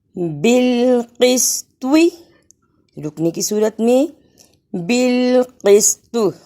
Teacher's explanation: یہاں طوا پر بھی قلقلہ کرنا ہے، یعنی آواز پلٹ کر آئے۔